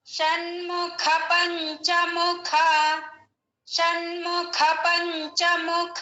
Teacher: పంచముఖ, పంచముఖాలో కూడా ఖ మహాప్రాణము.